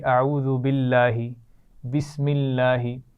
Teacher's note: آپ دیکھیے اعوذ باللہ، بسم اللہ، لام جلالہ کو آپ باریک پڑھتے ہیں نا کیونکہ اس سے پہلے زیر آ رہی ہے